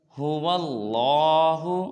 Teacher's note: اس میں هو اللہ میں لام کو پر ادا کریں گے